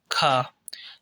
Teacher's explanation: अघोष भी है और महाप्राण भी है